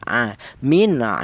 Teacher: huruf ain ini keluarnya memang dari tenggorokan ya. Tenggorokan bagian tengah ya. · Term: huruf halaq